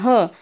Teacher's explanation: ह चा उच्चार करताना काय होतं आपल्या तोंडावाटे मोठ्या प्रमाणात हवा बाहेर पडते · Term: महाप्राण